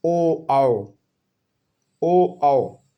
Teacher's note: इनका उच्चारण स्थान है कंठ और ओष्ठ